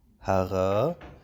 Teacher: male hara is with an schwa in the end